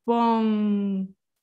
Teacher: the air flows through your nose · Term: nasal sound